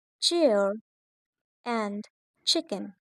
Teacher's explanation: Africates are single sounds but they have two phases. They start with a stop sound like T and moves to the fricative sound